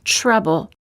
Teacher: adore audit t plus r sounds like an almost CH sound when the t is followed by an R sound the T changes and becomes an almost CH sound